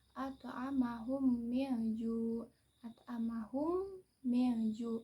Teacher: Dibacanya dengan menyamarkan mim rangkap atau ditasydidkan, dibaca dengan dengung. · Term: idgham mimi